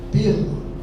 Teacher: Assento diferencial pela e pela. A preposição pela é pronunciada com a primeira vogal fechada.